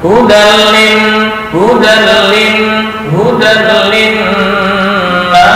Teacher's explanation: hudan tanwin bertemu lam idgham bila gunnah. Jangan dengung.